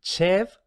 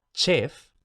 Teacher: Seguimos aquí, tenemos que la vocal se sigue cerrando un poquito más, chev, y luego algo bastante frecuente, no solo en francés, sino en muchas otras lenguas, es el ensordecimiento de la fricativa final, es decir, la V se convierte en la sorda correspondiente, es decir, F.